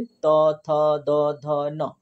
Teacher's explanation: इसमें ना आपकी जो जीभ है वो जाके दांत को टच करती है, तो ये क्या हो जाता है, दंतय हो जाता है।